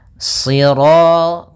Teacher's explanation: shad itu pangkal lidah kita terangkat dan melekat karena dia huruf idbaq. Sira, kemudian ro-nya ro tafkhim.